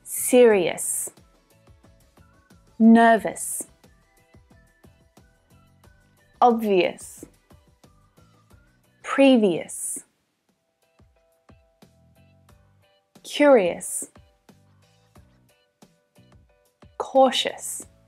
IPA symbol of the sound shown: əs